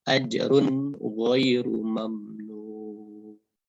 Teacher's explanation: dibaca jelas penuturan bunyi tanwinnya, yang bunyi runnya ini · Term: izhar